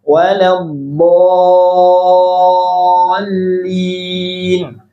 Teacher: Nah, ini mad lazim ya, mad lazim panjang 6 harakat.